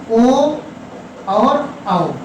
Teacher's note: ओ और औ, इनका उच्चारण स्थान है कंठ और ओष्ठ, कंठ धन ओष्ठ। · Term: कंठोष्ठम